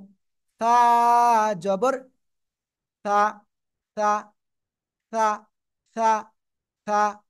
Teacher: জিহ্বার আগা সামনের উপরের দুই দাঁতের আগার সাথে লাগাবো